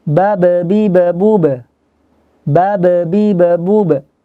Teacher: mim, wawu, dan ba itu sama di satu makhraj, yaitu di 2 bibir. Cuman sifatnya yang berbeda nanti. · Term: huruf ba